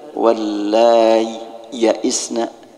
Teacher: Kalau dibaca izhar, maka supaya jelas izharnya dikasih berhenti sejenak kayak saktah.